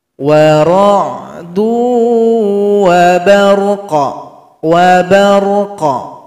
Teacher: Sukunkan huruf qaf, berikan bunyi pantulannya. Wa ra'du wa barqa, wa barqa.